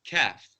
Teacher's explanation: the kaf is the light, pronounced from the back of the mouth, lightly, kaf. And qaf is pronounced with a rounder mouth, qaf.